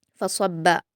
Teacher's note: फ़अक्सरू फ़ीहल फ़साद फ़सब्ब अलैहिम रब्बुका सौत अज़ाब। फ़सब्ब, स्वाद को पुर पढ़ेंगे, बा और फ़ा को बारीक पढ़ेंगे